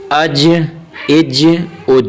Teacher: آگے حمزہ جیم زبر اج، جیم کو تھوڑا سا ہلا کے قلقل آیا جیم پہ